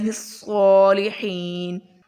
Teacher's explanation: صاد بہت موٹا پڑھیں گے اور صاد کے اوپر کھڑا زبر ہے تو اس کو لمبا کریں گے، الصالحین۔ وقف کی صورت میں آگے یا مدہ بھی ہے، حین پہ یا مدہ، اور آگے نون کو ساکن کر دیں گے وقف کی صورت میں، الصالحین۔